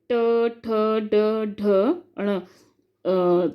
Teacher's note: मूर्धन्य, तालु के मूर्धा भाग से, मतलब तालु का जो आगे वाला भाग होता है जो हमारे दांतों से थोड़ा सा पीछे होता है उसे कहते हैं मूर्धा भाग, तो वहाँ टच करती है हमारी जीभ, तब वो होते हैं मूर्धन्य।